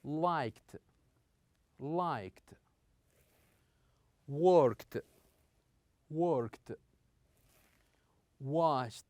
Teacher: here we have a slightly t that is pronounced at the end of these verbs